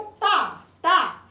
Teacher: जब आप बोलते हो ता, ता, तो आपकी जीभ दोनों दांतों के बीच में आ जाती है।